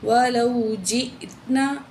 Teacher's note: تو یہاں حمزہ ہے، جھٹکے سے پڑھیں گے